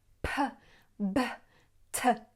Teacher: Elle les prononce à l'anglaise, c'est-à-dire en soufflant beaucoup.